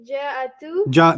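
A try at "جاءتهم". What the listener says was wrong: No, it doesn't say ja'atu. So the hum is not being said, right? We're pretending the hum isn't there. Say the word again without hum. Ja'at. Ja'at.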